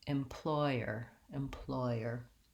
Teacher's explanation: The word employer has three syllables and it has second syllable stress